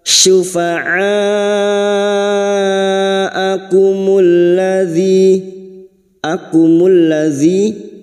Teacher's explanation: Syufa'a mat yang bertemu dengan hamzah dalam satu kalimat mat wajib mutasil, 5 harokat kita panjangkan.